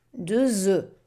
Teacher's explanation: And in the plural, you don't pronounce the F.